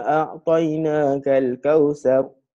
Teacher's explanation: Sepatutnya dengung 2 harakat tapi dia baca tak dengung, tak cukup 2 harakat.